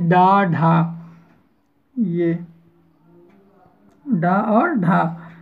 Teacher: आपकी तालु में जीभ जो है उल्टी होकर के छू जाएगी और झटके से छूट जाएगी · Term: उच्छिप्त व्यंजन